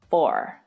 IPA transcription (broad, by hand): fɔː(r)